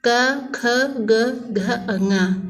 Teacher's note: क वर्ग क, ख, ग, घ, अंगा इतने सभी क वर्ग के अंतर्गत आते हैं और इनका उच्चारण स्थान कंठ है